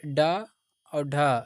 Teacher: ड, ढ ये क्या है? मूर्धन व्यंजन हो जाएंगे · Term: मूर्धन्य व्यंजन